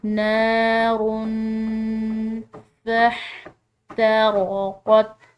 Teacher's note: را کی تنوین ہے، اس کے بعد فا ہے جو کہ حروف فا میں سے ہے، تو اس کو ہم مخفی کر کے پڑھیں گے نار فاحترقت، را موٹے حروف میں سے ہے اور حا کو